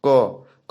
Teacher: क में कम आवाज निकल रहा है, इसका मतलब ये अल्प प्राण है